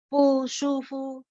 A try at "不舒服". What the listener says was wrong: fu-nya pendek aja ya. 不舒服。